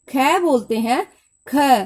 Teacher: जब हम ख बोलते हैं, ख, तो हमारे मुख से वायु अधिक निकलती है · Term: महाप्राण